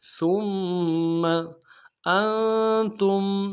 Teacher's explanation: تا کو میم ساکن کے ساتھ ملانا ہے، یہاں پہ اظہار ہوگا · سا کو میم کے ساتھ ملانا ہے، میم کے اوپر تشدید زور دیں گے ، اگلے میم کو نون سے ادا کریں گے، سا کو · ادا کریں گے، سا کو باریک ادا کرنا ہے، ثم انتم حمزہ کو نون ساکن کے ساتھ ملانا ہے، نون ساکن میں غنہ کریں گے